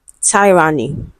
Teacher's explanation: we have e, and then we have the schwa sound, which is weak. Then we have n and e.